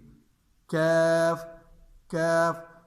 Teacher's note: قاف موٹے قاف میں قاف قاف قاف، لیکن یہ کاف میں چھوٹے کاف میں باریک کاف میں اس میں وہ لگے گی۔ کیف کیف، زبان کی جڑ اوپر کی طرف اٹھے گی بھی اور لگے گی بھی